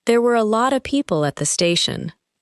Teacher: The words lot of become one sound group.